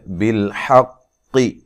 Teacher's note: لام کو ہلانا نہیں ہے، حا کو واضح نکالنا ہے، قاف کو موٹا ادا کرنا ہے